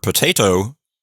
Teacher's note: when that initial vowel sound changes and gets shortened, we call that a reduced vowel